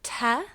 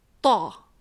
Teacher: t is kind of like from the front of your mouth and a to is more from the center of your mouth. And then you've got the ka that I mentioned earlier and the which is a bit further back in your throat.